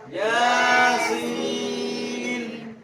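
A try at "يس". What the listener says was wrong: এই জায়গায় অর্থ টানবেন, তার থেকে 4 গুণ বেশি এটা টানতে হবে, সেই কেউ খেয়াল করে টানবেন।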